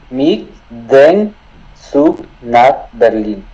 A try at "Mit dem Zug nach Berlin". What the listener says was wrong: Bueno, trata de cerrar los labios al decir dem, ¿ok? Mit dem Zug nach Berlin. Mit dem Zug nach Berlin.